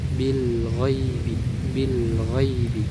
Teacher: mengalirnya aliran suara tapi dengan aliran yang sedang di antara sifat syiddah dan sifat rakhwah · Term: sifat bainiah